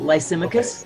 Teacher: The emphasis is on the second syllable.